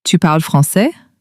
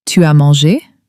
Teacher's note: With a rising voice to informally ask